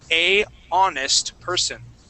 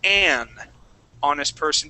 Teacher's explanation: even though it starts with an H, we do not pronounce that H